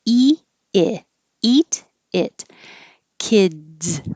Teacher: the tongue needs to be a little lower for the e vowel